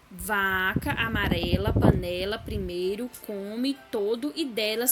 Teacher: a sílaba tônica é a penúltima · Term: paroxítonas